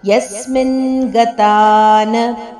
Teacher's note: ಗತಾ ದೀರ್ಘ ಅನಂತರ ನ ರಸ್ವಾಕ್ಷರ.